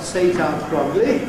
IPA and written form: s.eɪ.t.ɑː k.r.ɒ.g.l.i (Satar-Krogli)